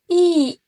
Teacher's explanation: Contohnya bisa dilihat pada i pada kata si, lidah posisinya tinggi di depan dan bibir tidak membulat